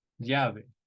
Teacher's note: Llave. So the double L in most Spanish-speaking countries, the double L is pronounced like a Y